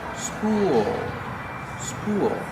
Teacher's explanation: long oo like pool and cool, followed by the dark L.